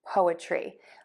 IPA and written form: poʊətri (POETRY)